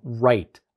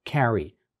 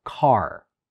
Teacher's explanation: in right are carry or car it's called the retroflex because when you're producing it the tip of the tongue slightly bends backwards and that's what retroflex means Retro meaning back and flex meaning